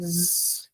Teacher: then we have the Z which is AER and it's voiced So when you say Z there should be vibration in your throat